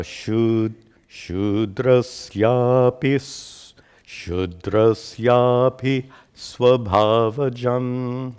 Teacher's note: api is followed by sva, which is two consonants together. So, there's actually a small pause there.